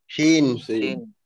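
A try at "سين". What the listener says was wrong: সিন। এটা কিন্তু সিন, শিন না, শিনে ফোঁটা থাকে উপরে, তিনটা ফোঁটা থাকে। এটা সিন, দন্তের স দিয়ে উচ্চারণ হবে, সিন।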